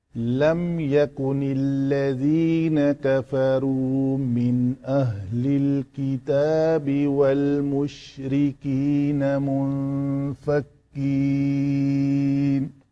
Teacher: سانس ختم ہو گئی، رکنا چاہا یہاں پہ تو نون کی زبر کو نہیں پڑھا، تو جو میں نے مد کی ہے اس کو کہتے ہیں مد عارض وقفی للسکون۔ تو یہاں پہ الذین کا لام کو میں نے پتلا پڑھا ہے۔ لام کوئی بھی آئے وہ سوائے اس میں جلالہ کے لام جب اس کا ماقبل زبر اور پیش کے ساتھ ہو تو پر پڑھا جاتا ہے، باقی سارے لام پتلے۔